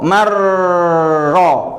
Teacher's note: Kalau idgham sekali kerjanya, mar langsung ke ro. Mar ro. Nunnya hilang dan suaranya hasilnya cuma 1.